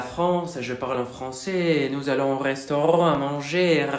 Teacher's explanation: la R francesa tiene vibración